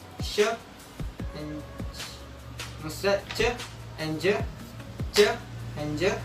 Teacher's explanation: palato alveolar, yaitu pada saat ujung lidah bertemu dengan langit-langit mulut, tetapi di sini lidah kita itu agak cekung. Contohnya pada huruf sh and c and j, c and j, ya bisa dirasakan lidah di sini agak cekung.